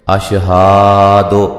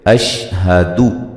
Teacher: دال کو لمبا نہیں کریں گے، ہا کو لمبا نہیں کریں گے